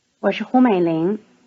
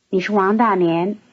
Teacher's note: notice that 是 is in its weakened, toneless form